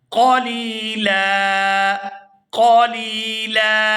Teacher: وقف کی صورت میں لام پر ایک زبر پڑی جائے گی اور اس کو کھینچ کر ادا کریں گے کیونکہ اس کے بعد الف مدہ ہے